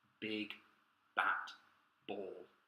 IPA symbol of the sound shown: b